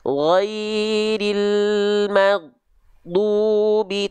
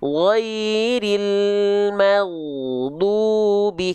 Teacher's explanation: Dari ghain sukunnya mau sampai ke du-nya nggak boleh ada jeda hening. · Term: rokhwah